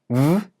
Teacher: when I say the v sound in the word love, I'm using my vocal cords. And when I touch my throat, I can feel it vibrating. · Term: voiced consonant